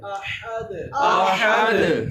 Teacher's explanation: اور دوسرا احد، اس میں جو ہا ہے اس کا مخرج کیا ہے؟ حلق کے درمیان والے حصے سے۔